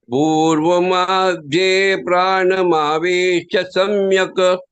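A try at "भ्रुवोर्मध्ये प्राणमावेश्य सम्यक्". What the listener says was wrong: The Bhruvo, not Bhurva. Bhruvor madhye pranamavesha samyak.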